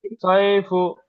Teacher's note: ইয়ালিনকে নরম আওয়াজে তাড়াতাড়ি পড়তে হয়